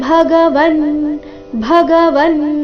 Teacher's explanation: ಭ ಇಲ್ಲಿ ಮಹಾಪ್ರಾಣ ರಸ್ವ ಬ ಬೇಡ ಭ ಎಂದು ಬರಬೇಕು